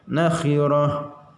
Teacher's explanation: Ta marbutoh dibacanya ujungnya ha